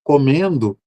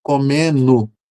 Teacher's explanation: em Minas se apaga muito o som do gerúndio, né? Então, comendo vira comenu né?